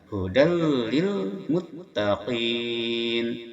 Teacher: Hudal, di sini ada hudal, tanwin patah berhadapan dengan lam, itu hukumnya idgham bila gunnah, yang mana memasukkan tanwin patah kepada lam tanpa disertai dengan dengungan